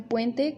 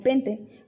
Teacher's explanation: la reducción de los diptongos a un elemento